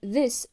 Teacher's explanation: the sound the in this is voiced which means the vocal cords vibrate while pronouncing the sound